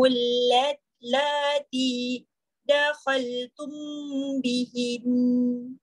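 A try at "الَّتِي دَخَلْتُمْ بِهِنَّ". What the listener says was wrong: Cantik.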